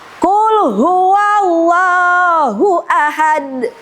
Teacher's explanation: cara membacanya adalah getarannya lebih kuat dibandingkan dengan sugro. Harus terdengar ya suara getarannya. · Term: qalqalah kubro